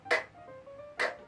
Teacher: La siguiente es el sonido k, k. En este caso es con aire. Tenemos tres sonidos que se producen con aire, que son la primera que vimos, p, p.